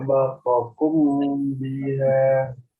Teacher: Kalau ada mim sukun bertemu dengan ba, maka dia harus disamarkan dan didengungkan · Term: ikhfa syafawinya